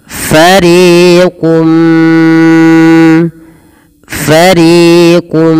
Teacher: ditahan suara mnya sepanjang dua harakat karena disertai dengan gunah maka dinamakan dengan Idam bunah kita coba ulang fariquum fariquum nah